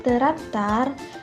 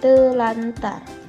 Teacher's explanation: bunyi R dan R pada kata terantar diubah menjadi L dan R sehingga menjadi telantar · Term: disimilasi